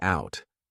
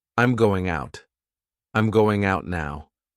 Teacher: We have that flap T